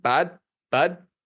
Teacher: Canadians will say bud with this rising intonation.